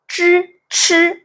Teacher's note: 쯔, 츠 이 음들은 혀끝으로 일단 공기가 나가지 못하게 장애를 만들고 그 다음에 공기가 나가는 순간 이 장애를 극복하면서 만들어지는 소리다. 그러니까 발음을 하는 그 순간 혀끝을 열어주셔야 돼요.